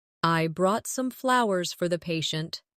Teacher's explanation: Stress flowers to show the gesture.